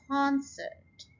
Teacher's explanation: it's कॉन्सर्ट, क्योंकि आपने stress first syllable के ऊपर डालना है